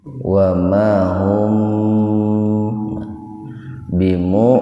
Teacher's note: Jadi kalau ada mim mati ketemu dengan ba, itu hukum tajwidnya ikhfa safawi. Jadi mimnya dibaca samar di bibir.